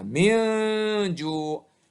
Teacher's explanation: ada nun mati juga. Ketemu dengan jim. Nah, tadi kan jim. Ya, dia harus dengung dan samar. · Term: ikhfa